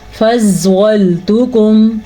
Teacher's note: فَضَّلْتُكُمْ، پھر سنیں، فَضَّلْتُكُمْ، زوات کو پور پڑھیں گے، زوات پہ زبر کی وجہ سے، ٹھیک ہے، اور لام باریکی سے پڑھیں گے